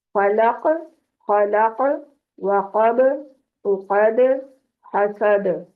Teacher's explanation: तो इन हरूफ पे कलकला होगा, पलट कर बाउंस होकर आवाज आएगी